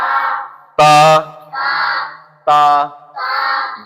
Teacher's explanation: আপনার জিহ্বার আগা সামনের উপরে দুই দাঁতের গোড়ার সঙ্গে লেগে উচ্চারণ